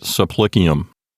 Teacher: the sound of the p and so the b turns into a p we call that assimilation so it's really subplicium but with the b turned into a